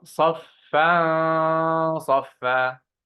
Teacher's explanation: Tanween followed by sad, that's heavy ghunna.